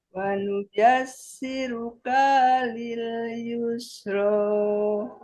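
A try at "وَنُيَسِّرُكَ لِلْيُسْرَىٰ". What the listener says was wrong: siru kalil, hanya kepanjangan.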